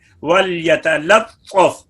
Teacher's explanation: وَلْيَتَلَطَّفْ میں تا کے بعد جو لام ہے اس کے بعد طا حروف مستعلیہ میں سے ہے، وہ پر ہے تو اس کا اثر لام کے اوپر نہ آئے، وَلْيَتَلَطَّفْ نہیں ہونا چاہیے، وَلْيَتَلَطَّفْ۔ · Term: لام کو بھی باریک